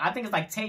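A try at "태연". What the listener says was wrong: Yeah, there's no G. Taeyeon.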